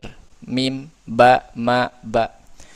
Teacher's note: Kenapa harus diganti dengan huruf mim? Karena mim sama dengan huruf ba secara makhrajnya, kan sama di bibir.